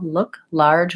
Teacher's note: dark L and if I'm saying look large I'm mispronouncing and I really do need a light L look large with no vowel before it and those initial L